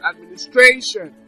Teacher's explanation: for instance Administration so now that's the five syllable Administration now so the stress is on stration